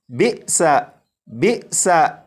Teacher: ان تمام حمزہ ساکنہ کو پڑھنے کا ایک ہی طریقہ ہے کہ انہیں جھٹکا دے کر پڑھتے ہیں